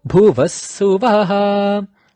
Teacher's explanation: You notice how the Vaha in Bhuvaha went low.